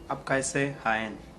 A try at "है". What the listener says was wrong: Not so much stress on n. Hai. Like normal. We go all the way down.